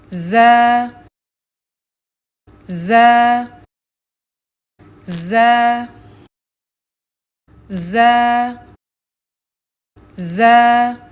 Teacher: تو آپ نے اس بزنگ کا خیال رکھنا ہے کہ زا میں س کی آواز نہ ہو بلکہ ز کی آواز ہو۔ حرف زا کو ادا کرنے کے لیے ہم زبان کو اپنے مخرج پہ رکھیں گے، پھر اس کو ادا کرتے ہوئے بالکل نارمل طریقے سے اپنے منہ کو کھولیں گے۔ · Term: بزنگ ساؤنڈ